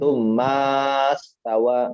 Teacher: Jadi mimnya nggak mungkin dibaca panjang.